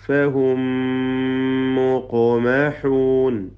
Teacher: ഫഹും സാക്കിന മീം ശേഷമുള്ള മീമിൽ പൂർണ്ണമായും ലയിപ്പിച്ച് മണിക്കുക.